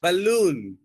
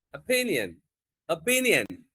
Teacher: ఇప్పుడు స్ట్రెస్ వచ్చేసరికి second syllable మీద ఉంటుంది